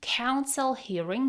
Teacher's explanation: the L at the end of counsel smoothly connects to hearing. Counsel hearing sounds like counseling.